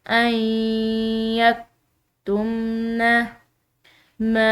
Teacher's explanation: میم کے بعد آنے والی جو یہ الف مدہ ہے تو اس کو ہم نے پڑھنا ہے ایک الف کی مقدار ، یعنی کہ ہم نے اس میم کو کھینچ کر ادا